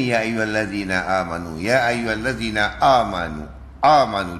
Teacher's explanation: dia tersentap bunyinya itu untuk Hamzah